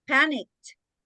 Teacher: Suena como una T al final.